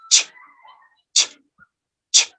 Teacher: First, t, alveolar, stop, and then we pass to the post-alveolar or palatal sound, fricative.